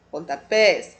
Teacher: Pontapés, a sílaba tônica é pés